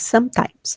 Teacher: Percebam que o E no some não tem, né, muito som aqui.